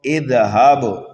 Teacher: با دیکھیے حروف قلقلہ میں سے ہے، یہاں پر قلقلہ صغیرہ ہوگا